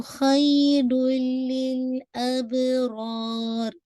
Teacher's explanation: آپ نے لام کو ہچ کرنا ہے، تنوین کے بعد لام ہے تو خیرون ہونا چاہیے تھا، لیکن تنوین کی آواز کمپلیٹلی لام میں مرج ہو گئی ہے، جو کہ یرملون کا لیٹرز ہے، تو یہ بھی ادغام کامل ہے وتھ داؤد غنہ، غنہ نہیں کریں گے۔